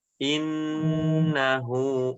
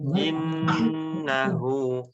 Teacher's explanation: Innahu nun tasydidnya dibaca dengan dengung yang lama.